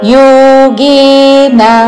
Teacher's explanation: యోగే రెండు దీర్ఘములు చివరిలో న హ్రస్వము. యోగేన అని దీర్ఘము పలకకూడదు చివరిలో.